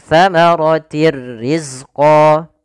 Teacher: Idgham masuk artinya memasukkan bila gunnah tanpa disertai dengan gunnah. Sehingga hanya masuk saja tanwinnya kepada huruf ra tapi tidak ditahan dengan gunnah. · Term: idgham bila gunnah